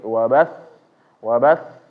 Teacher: karena ada tasdid eh tasdidnya ya suaranya ditekan menyebabkan agak naik sedikit